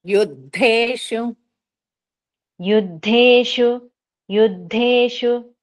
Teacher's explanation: ద కిందత్త మహాప్రాణం ఉంది గట్టిగా చెప్పాలి